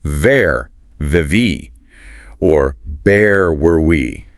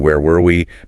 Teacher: the W sound. Think water, window, needs those rounded lips, that gliding sound. Getting that woo sound right in where were we?